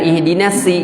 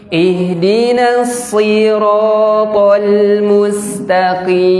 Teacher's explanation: sod ujung lidah ke gigi seri bawah, dan sod ini huruf tebal. Kalau dalam bahasa tahsin itu huruf isti'la.